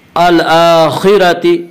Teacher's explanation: اس کا قاعدہ ہے کہ را کے اوپر زبر اور پیش آئے تو را کو پر پڑھا جائے گا, را کے نیچے زیر آئے تو را کو باریک پڑھا جائے گا. را کے اوپر زبر ہے اس لیے را کو پر پڑھیں گے